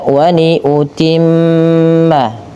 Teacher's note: tahanlah pada lafal bunyi mim atau nun yang berharakat tasydid, karena pada lafal tersebut terdapat bacaan gunnah, yaitu dengan menahan bunyi suara nunnya atau suara mimnya.